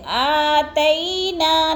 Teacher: آتینا، تئی پہ یلین ہے، تئی کو جیسے یا ساکن سے پہلے تا کے اوپر زبر ہے تو یلین کو ہم نے لمبا بھی نہیں کرنا اور جھٹکا بھی نہیں دینا